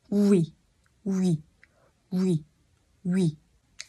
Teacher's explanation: Đọc nhanh chữ U kéo sang chữ I là nó thành chữ uy.